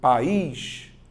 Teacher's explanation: vogal mais vogal só que em sílabas diferentes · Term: hiato